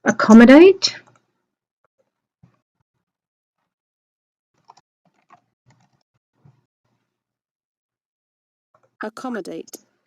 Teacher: And there we have the schwa right up the front.